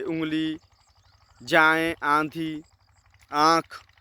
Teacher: चंद्र बिंदु लगाया जाता है ऐसे स्वर नाक से बोले जा ऐसे स्वर नाक से बोले जाने के कारण अनुनासिक कहलाते हैं